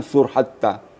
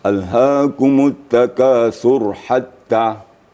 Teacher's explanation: Jangan sur hatta. Kalau sur hatta berarti rohnya sukun. Rohnya mati. Mati. Seharusnya dihidupkan.